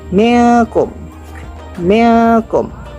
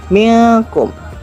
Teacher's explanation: Bagaimana cara membaca ikhfa? Cara membaca ikhfa adalah seperti ingin mengucapkan huruf eng tapi tidak terlalu ditekan.